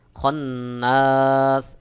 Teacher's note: নুনের উপরে তাসদিদ ওয়াজিব গুন্না হবে